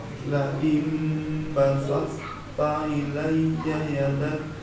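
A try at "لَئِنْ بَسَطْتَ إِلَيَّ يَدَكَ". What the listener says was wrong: Basal, jelaskan toknya.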